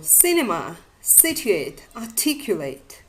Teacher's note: the placement of primary stress on the third syllable from the end in three and four syllabic words